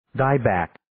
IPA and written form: 'daɪ,bæk (Dieback)